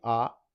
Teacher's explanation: जैसे हम आ को उच्चारित करते हैं तो हमारे होंठ गोलाकार नहीं होंगे। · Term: आवर्त मुखी स्वर, आवर्तमुखी